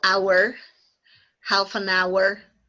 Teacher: a word in English that doesn't sound the H at the beginning of a word